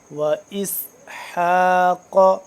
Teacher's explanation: اور حا حلق کے درمیانی حصے سے قاف کو موٹا کر کے پڑھیں گے